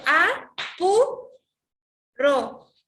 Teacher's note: A y ro vienen a ser las sílabas átonas porque tienen la menor intensidad de voz, y pu viene a ser la sílaba tónica porque es aquella que lleva la mayor fuerza de voz · cuando digo pu estoy subiendo la voz, ¿ya? Entonces esa es tónica.